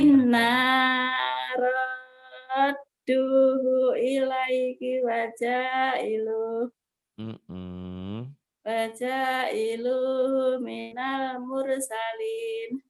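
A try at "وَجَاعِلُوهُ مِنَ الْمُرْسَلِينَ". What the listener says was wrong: Ya, hu-nya kurang keluar tuh. Waja'iluhu minal. Waja'iluhu minal coba.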